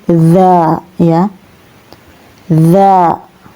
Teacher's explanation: huruf dzal ini ya keluar pada ujung lidah dengan bibir atas